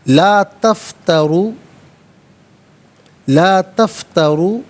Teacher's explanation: یہ را پر پیش ہے، را کو پر کر کے پڑھا جائے گا